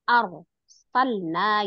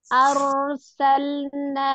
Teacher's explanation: Rok sukunnya itu dialirkan ya, jangan dijedain.